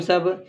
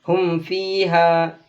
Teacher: جو میم کی آواز آتی ہے اتنی ہی ہلکی سی آواز آنی چاہیے بغیر غنہ کے۔ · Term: اظہار شفوی